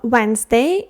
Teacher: Wednesday, D. Don't pronounce. Не вимовляємо D.